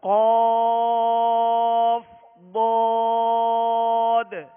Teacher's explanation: قاف دو نقطے والا اور ضاد دونوں حروف مستعلیہ میں سے ان کو پر کیجئے، موٹا پڑھیے